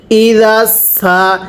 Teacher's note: জালটা সিনের সাথে লাগবে জালটা নরম করে সিনটা চিকন করে